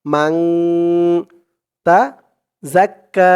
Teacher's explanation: ইকফা গুন্না হয়েছে কারণ হচ্ছে নুন সাকিনের পরে ইকফার 15 হরফের এক হরফ তা আসছে